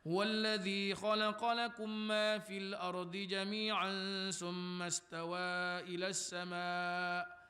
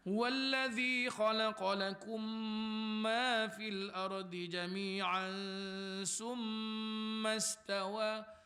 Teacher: cuba mim syaddah tu hang panjang sikit dia kata